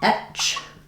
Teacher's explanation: etch with the voiceless ch sound. German speakers tend to use voicing where they shouldn't and remove voicing where they shouldn't because the patterns and rules are different in German.